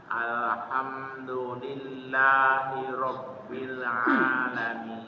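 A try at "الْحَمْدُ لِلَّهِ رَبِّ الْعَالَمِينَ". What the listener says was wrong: Oke, akhir ayatnya tuh dipanjangkan. Alhamdulillahi rabbil alamin.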